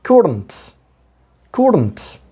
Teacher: been given accordance couldn't schwa sound has been given here but you may forget schwa you don't need to pronounce the schwa